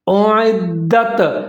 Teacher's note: اب لفظ ہے اعدت، اس سے پہلے حمزہ کے اوپر پیش ہے، عین کے نیچے زیر ہے، لیکن پھر دال جو ہے مشدد ہے، اس کے اوپر زبر ہے، یہاں پر ہم ادغام کریں گے اعدت، دال کی آواز کو ہلا کے پڑھیں گے، ڈبل کر کے پڑھیں گے اعدت۔ آگے جو تا ہے اس کے اوپر ساکن ہے، اس کو پھر دال کے ساتھ ملا کے پڑھیں گے اعدت۔